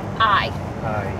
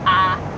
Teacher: with the diphthong, with the I sound, there's jaw movement. And with the flat I, there's not in the same way